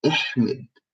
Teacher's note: It's a break in the vowel. So it's more of an E. So instead of saying you say E. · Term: kasra